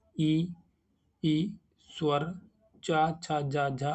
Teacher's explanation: तो इसका आंसर होगा तालु से। जिन ध्वनियों के उच्चारण में जिह्वा का भाग मध्य वाला जो भाग है तालु से स्पर्श करता है उन्हें तालव्य कहते हैं।